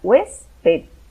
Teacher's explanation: la sílaba tónica es la hues, la segunda, de derecha a izquierda. Es la penúltima.